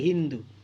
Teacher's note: দন্তসটা হতে পরিণত হয় সিন্ধু থেকে হিন্দু